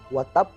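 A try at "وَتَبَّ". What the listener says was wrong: Wa tab. Jangan di ba. Wa tab.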